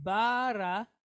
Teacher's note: So that is a shortened or reduced A. So we have an R sound from the resh, and then a quick A, ra. So we have bara.